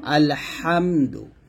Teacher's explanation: অর্থাৎ এখানে আছে আলহামদুলিল্লাহি, এখানে হাট আমরা গলার মাঝখান থেকে চাপ দিয়ে বলি